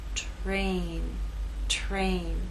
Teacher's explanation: And in this last word, T is voiceless. R begins voiceless and takes on a voiced sound as we move into A.